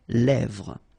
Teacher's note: Same thing here, final S not pronounced, and then this E accent grave here, it gives you the E, really open sound.